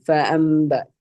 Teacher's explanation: ആ നൂനിന് ശേഷം ബാ വന്നിട്ടുണ്ട്. അപ്പൊ ആ നൂനിനെ നമ്മൾ മീമായി മറിച്ച് മണിച്ച് ഉച്ചരിക്കണം.